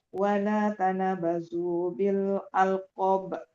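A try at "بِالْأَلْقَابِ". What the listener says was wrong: Iya, kubra tapi konya yang dihidupkan. Maksudnya dipanjangkan sedikit. Alqabi.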